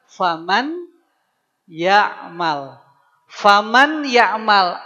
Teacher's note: rasakan masuk ke dalam rongga hidung ketika meleburkannya. Itu namanya idgham bighunah.